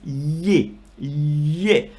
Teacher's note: The problem with ye is that it comes from the throat. And it's, imagine you're saying g, you got the g position, but you are emitting a l sound. · And it's, imagine you're saying g, you got the g position, but you are emitting a l sound. It's a cross between a g articulation and a l sound